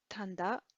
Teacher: there's a bit of nasalization that happens in the central dialect here.